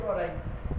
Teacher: ये दोनों कंठ और तालु से बोले जाते हैं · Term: ए ऐ